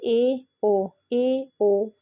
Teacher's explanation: होते हैं अर्ध मतलब आधा ठीक है आधा बंद ठीक है जिन स्वरों के उच्चारण में जो हमारा मुंह है मुख है वो आधा बंद ही रहता है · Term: अर्ध समृत स्वर